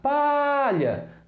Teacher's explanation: Foi o pá. Então, pá é o som tônico, é o som mais forte, é a sílaba tônica dessa palavra